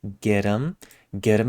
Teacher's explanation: them and we take off the th in them get them now that t turns into that tapping T